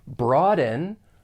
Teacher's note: you may hear people pronounce this with a glottal stop